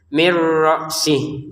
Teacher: Kalau nun sukun bertemu ra, masukin tanpa dengungan.